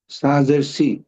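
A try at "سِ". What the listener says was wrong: আর একটু কম বাতাস। সাজের সি, জিহ্বার আগা উপরের দুই দাঁতের সাথে লেগে বের হবে।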